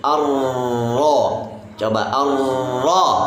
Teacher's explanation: ro fathah tebal dan jangan lupa kasih Getaran yang lembut